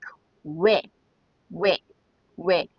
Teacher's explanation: when you say it, you have to say u and e very quickly to make we